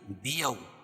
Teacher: واو ساکن سے پہلے زبر ہو تو واولین ہوتا ہے، اس کو نرم آواز کے ساتھ جلدی ادا کریں گے